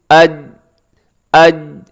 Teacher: تو حمزہ زبر جیم، اج، اج۔ جب آپ اج کہیں تو اپنی زبان کو آپ دیکھیے گا کہ زبان کا بیچ واقعی آپ کے تالو کے ساتھ لگ رہا ہوگا۔ پھر بولیے گا حمزہ زبر جیم، اج، اج، اج۔